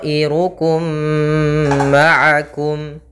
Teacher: masukkan mim yang pertama kepada mim yang kedua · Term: idgham mimi